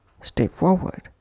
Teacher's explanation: Pushing P into F of forward